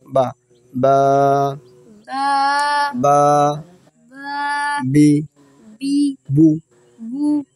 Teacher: দুই ঠোঁটের ভিজা অংশ থেকে বা উচ্চারিত হয়